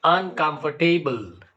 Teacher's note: the first syllable un is not stressed it is a weak syllable and the last syllable b e BL that is also weak